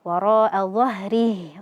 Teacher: Kemudian rnya itu dibaca tebal karena fathah. · H-nya kita sukunkan dan jangan lupa ee berikan sifat rakhwahnya yaitu mengalirnya suara.